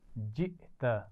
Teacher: اس میں حمزہ ساکن ہے، جھٹکے سے پڑھا جائے گا